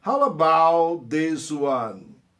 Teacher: Mata o T do about, tá?